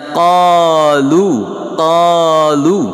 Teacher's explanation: Jadi lafaz qa dibacanya tidak muncung mulut ataupun monyong mulut, hanya lebar ke atas sahaja. Qalu, lu waw sukun mat asli panjangnya 2 harakah.